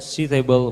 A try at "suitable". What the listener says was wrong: The I is silent, it's not red.